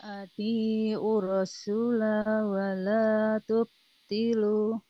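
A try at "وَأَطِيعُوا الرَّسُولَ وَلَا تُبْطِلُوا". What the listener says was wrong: Sekarang su-nya malah jadi pendek. Su-nya jadi panjang ya. Tetap 2 harokat. Ya, cuma yang saya koreksi adalah di sini Bu ya. Di kalimat ini nih.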